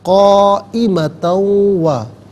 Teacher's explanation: 5 سے 6 حرکات کی مقدار کھینچ کر پڑھ سکتے ہیں۔ تا پر دو زبر کی تنوین ہے، اسے واو کے ساتھ ملائیں گے، واو کی آواز کو ادا کیا جائے گا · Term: یرملون کا قاعدہ